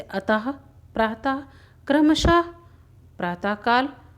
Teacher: विसर्ग का उच्चारण हल्के रूप में ह ध्वनि के समान होता है।